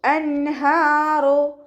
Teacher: അഖ്സൽ ഹൽക്കിൽ നിന്നാണ് ഹംസ വരുന്നത്, അതിൻ്റെ സൗണ്ട് ക്ലിയർ ആക്കുക കേട്ടോ.